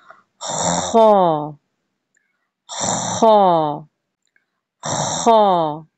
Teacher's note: خا میں آپ کو خراٹے کی آواز آئے گی. خراٹے کی آواز آپ نے یعنی کہ نکالنی ہے اور تھوڑا سا آپ نے زور ڈالنا ہے.